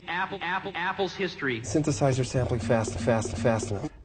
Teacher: another thing Fassbender gets is that kind of slight nasality